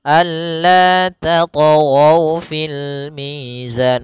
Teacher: Kemudian tat ada huruf th yang berharakat sukun maka kita namakan dengan qalqalah. Hati-hati membacanya jangan sampai membaca dengan adanya hamzah. Jangan tat tat tapi dia alla tat fil mizan mengalir saja.